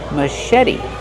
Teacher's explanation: the T is a fast T because it's between vowels.